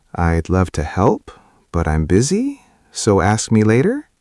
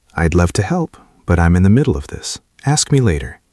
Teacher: But if you want to be respected, you need a falling intonation, a statement tone